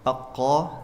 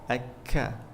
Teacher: Kalau qaf agak di belakang, kaf maju dikit. Pertemuan lidah dengan langit-langit agak maju.